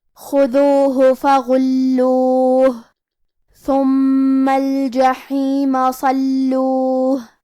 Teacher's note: کلمت الجحیم میں حرف الحاء کو ہم حلق کے درمیان والے حصے سے پڑھیں گے. کلمت صلوہ میں حرف الصاد حروف التفخیم میں سے ہے تو ہمیں یہ حرف کو بھاری آواز میں اور منہ پھلا کے پڑھنا ہے. · حرف اللام پہ تشدید ہے لہذا ہم لام کو 2 حرف کے برابر پڑھیں گے کیونکہ تشدید کی اصلیت 2 حرف ہے. · کلمت ثم میں حرف الثاء کی ادائیگی زبان کے سر اور اوپر والے دانتوں کے اندرونی کناروں سے ہے. پھر یہاں میم پہ تشدید ہے لہذا ہمیں 2 حرف کے برابر میم کو پڑھنا ہے.